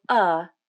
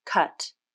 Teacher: the jaw drops and the tongue is relaxed and down the tongue tip is also down behind the bottom front teeth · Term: UH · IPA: /ʌ/